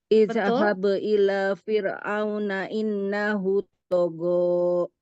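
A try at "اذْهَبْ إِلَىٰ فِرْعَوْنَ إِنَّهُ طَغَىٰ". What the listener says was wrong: Idnya jangan mantul, digeser. Jangan dilepas.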